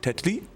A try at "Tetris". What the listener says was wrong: No, we do pronounce the S. Tetris. Just say Tetris.